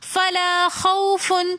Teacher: فلا کے اندر بھی الف مدہ ہونے کی وجہ سے ہم نے فلا ایک الف کی مقدار کھینچ کر پڑھا. خوفن میں جو واو ہے یہ واو لین ہے اس لیے ہم نے اس کو بالکل بھی نہیں کھینچا بلکہ نرمی کے ساتھ اور آسانی کے ساتھ پڑھا